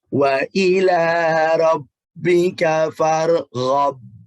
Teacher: qalqalah tapi nggak terlalu tebal